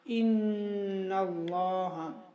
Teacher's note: نون مشدد میں غنہ بقدر ایک الف ہوگا